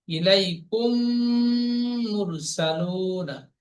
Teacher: এখানে সংজ্ঞায় পড়েছি, মিম সেকেন্ডের পরে যদি মিম আসে তাহলে মিমকে মিমের সাথে মিলিয়ে একালি পরিমাণ গুণনা করে পড়তে হয়, একে ঈদগাম স্বাভাবিক বলে। এখানে মিম সেকেন্ডের পরে মিম এসেছে, তাই মিমকে মিমের সাথে মিলিয়ে একালি পরিমাণ গুণনা করে পড়বো। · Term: ঈদগামের স্বাভাবিক